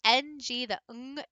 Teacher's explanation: The ng, the ng, comes back further in the throat before it resonates. And so you're producing the sound a little bit more back of the mouth, top of the throat string.